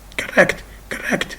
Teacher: So the second syllable is stressed. Why? Because it contains what? It contains the vowel with coda.